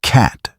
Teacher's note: Americans open the mouth wide for the vowel sound.